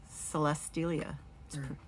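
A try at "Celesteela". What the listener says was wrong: Not a ya. Celestela.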